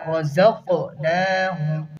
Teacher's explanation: رَزَقْنَاهُمْ میں جو زا ہے اسے سختی کے ساتھ پڑھیں گے، آگے قاف ہے اسے پر کریں گے